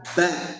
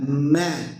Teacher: Kalau ba ditekan, kalau ma sedikit ditekan ya karena ba huruf syiddah kuat tekan.